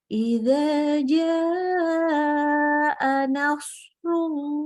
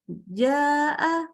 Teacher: Wajib panjang, bacanya 4-5 harokat. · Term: mat wajib muttasil